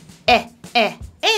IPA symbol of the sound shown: ɛ